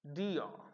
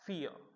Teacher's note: We are getting two vowel sounds. The sound is beginning at the place of E, but it is gliding and it is going in the direction of A. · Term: diphthong